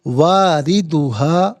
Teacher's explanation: وَإِن مِّنكُمْ إِلَّا وَارِدُهَا، واردها، را کے نیچے زیر ہے، را کو باریک کر کے پڑھا جائے گا